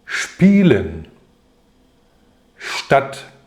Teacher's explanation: 这两种组合出现在词首时▁s▁要发▁sh